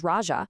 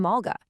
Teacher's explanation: the R sound, which was common everywhere else in India, was systematically softened into an L sound. For example, the formal Sanskrit word for king, which is raja, would have been heard on the streets of Magadha, and very likely from the Buddha's own lips, as laja.